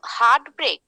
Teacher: if it is considered to be one word okay then both the syllables are getting the stress